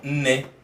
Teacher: my tongue would go to rest on the alveolar ridge.